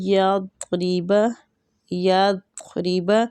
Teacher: ضاد جو ہے یہ پر حروف ہے، اس کو پر پڑھنا ہے · ری را جو ہے یہ زیر کی وجہ سے باریک پڑھا جائے گا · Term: مستعلیہ